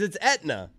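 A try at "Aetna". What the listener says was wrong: Yeah, it starts with an A. Should be Atna.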